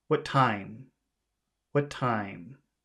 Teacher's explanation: let's make what short and time long